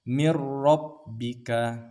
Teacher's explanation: ini di sini nun mati temu dengan ro mirbika seperti itu tidak ada dengung dan juga tidak kita baca huruf nun ini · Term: idgham bila ghunna, idgham bila gunnah